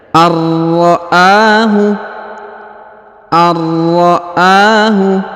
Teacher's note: Perhatikan huruf nun sukun bertemu huruf ra bertasdid. Maka huruf nun sukunnya menghilang, melebur ke huruf ra, ya, ditahan dan ditekan 2 harokat.